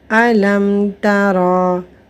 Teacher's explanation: تا جو ہے نہ ہی وہ با ہے نہ ہی وہ میم ہے، وہ حروف تہجی میں با اور میم کے علاوہ حروف میں سے تا یہاں پر آ گئی ہے، تو یہاں پر میم کو اس کے مخرج سے ظاہر کر کے پڑھیں گے اور غنہ نہیں ہوگا۔ یہاں پر اظہار شفوی کا قاعدہ آئے گا اور یہاں پر غنہ نہیں ہوگا۔